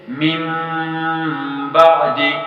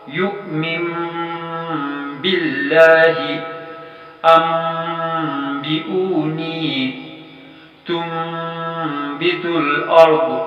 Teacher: یعنی نون ساکن کی آواز میم ساکن کی آواز میں بدل جائے گی، جسے واضح کرنے کے لیے اسی نون ساکن کے عین اوپر یا تنوینی نون ساکن کی جگہ ایک چھوٹا سا میم حرفی شکل میں اکثر لکھا ہوا بھی ہوتا ہے، جسے اقلابی میم کہا جائے گا یا میم اقلاب کہا جائے گا۔